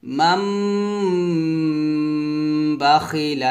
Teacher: গুন্নাটা একটু বেশি পরিমাণ করে গুন্না করবেন · নুন সাকিনটাকে মিম সাকিন পড়বেন, অর্থাৎ মিম মিম যে মিম এভাবে উচ্চারণ হবে, বানান করবেন নুন দিয়ে, তবে উচ্চারণ করবেন মিমের।